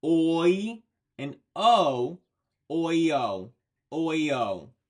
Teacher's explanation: What you're hearing, Toyota, is the two vowels next to each other, kind of making it sound like there is a Y sound in there, but there isn't. It is just your voice gliding between those two vowels of oi and o